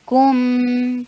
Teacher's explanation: کاف کے اوپر ضمہ، ہونٹوں کو گول کر کے میم کے اوپر توسط کا ٹائم دیجئے